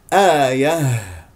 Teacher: تقف على ها ساكنه مهموسه يجري فيها الصوت ويجري فيها النفس من اقصى الحلق